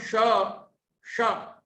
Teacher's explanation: टवर्ग के वर्णों का उच्चारण करते समय हमारी जीभ की, जिह्वा की विशेष आकृति बनती है, अर्थात जीभ अंदर की तरफ पीछे को मुड़ती है। जब हम जीभ को पीछे की ओर मोड़कर बोलेंगे तो श, श, ये उच्चारण शुद्ध हो सकेगा।